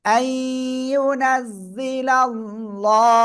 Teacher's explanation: আল্লাহ শব্দের লামের ডাইনে জবর মোটা আওয়াজে পড়তে হবে